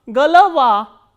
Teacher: G, o, l, o, v, a, and a is stressed and these 2 o are unstressed. So, these unstressed o will be pronounced as a. So, g, l, va, galava. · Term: reduction